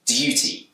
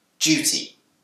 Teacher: In Britain, this word can be pronounced with a d sound, duty. But it's also commonly pronounced with a j sound, duty. This change from dir to j is called yod coalescence.